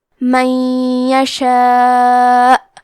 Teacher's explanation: کلمت من کے آخری میں نون ساکن ہے، پھر حرف لیا آتا ہے کلمت یشاء، یا حروف الادغام بغنہ میں سے ہے تو ہم یہ حکم کو غنہ اور تشدید کے ساتھ ادا کریں گے۔ من یشاء، کلمت یشاء میں مد واجب متصل ہے تو ہم اپنی آواز 4 مد کے برابر لمبی کریں گے